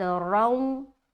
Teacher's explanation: رائے مشددہ کے اوپر اگر دو زبر کی تنوین ہے یا دو پیش کی تنوین ہے، یا رائے مشددہ کے اوپر ایک زبر ہے یا رائے مشددہ کے اوپر ایک پیش ہے، تو رائے مشددہ کو موٹا کر کے پڑھیں گے